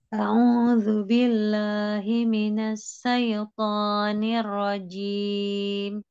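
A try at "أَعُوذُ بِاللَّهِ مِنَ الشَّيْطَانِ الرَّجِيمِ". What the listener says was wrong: Disempurnakan lagi. Syaiton ya dengan shin. Shin ya. Minasyaiton.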